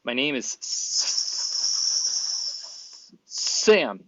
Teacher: moving off the voiceless s to the voiced a vowel right after it so it's that transition from the s to the vowel what